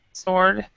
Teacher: And in the word sword, you do not pronounce the W.